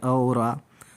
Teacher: तो कंठ से हम बोलते हैं अ और आ